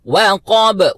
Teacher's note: واو کو باریکی کے ساتھ ادا کرنا ہے، قاف 2 نقطے والا، اس کو پر طریقے سے فل ماؤتھ اور با کے اوپر قلقلہ کرنا ہے